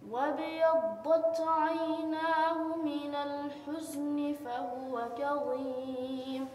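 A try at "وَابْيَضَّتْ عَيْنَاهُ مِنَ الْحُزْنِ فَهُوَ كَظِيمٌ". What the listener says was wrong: Little blown sound coming in the door. Like you see the blown. وبيضت. That's wrong. You don't need to use your lips when you're pronouncing the dot. you only use the middle part of your tongue touching the side gums. And sound should be like this, fly, like this, not like this, not like a balloon.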